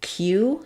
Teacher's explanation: we have the gliding yes sound and the u vowel